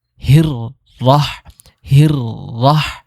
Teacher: এর মানে আমরা এখানে শক্ত করে দুইটা রো উচ্চারণ করব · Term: তাশদিদ